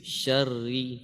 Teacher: coba ditipiskan ra-nya. Syarri tipis.